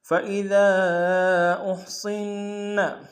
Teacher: صاد کو موٹا ادا کریں گے، نون کے اوپر تشدید زور دیں گے